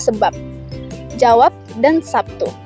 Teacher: fonem B dapat direalisasikan sebagai bunyi B atau P jika berada di akhir silabel. Contohnya pada kata sebab, jawab, dan sabtu.